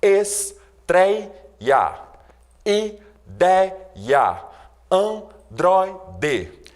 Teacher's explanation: Reparem aí que a sílaba mais forte nessas palavras é justamente a penúltima. Portanto, estreia, portanto, androide, são palavras paroxítonas.